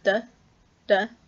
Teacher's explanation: The broad unlenited D, again similar to English, except unaspirated, so it's unvoiced and unaspirated